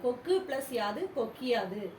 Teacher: தனக்குரிய ஒரு மாத்திரையிலிருந்து அரை மாத்திரை அளவே ஒலிக்கும் அது குற்றியல் இகரம்